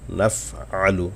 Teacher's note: নাফআলু টান নাই কিন্তু আইন গলা থেকে আনবেন।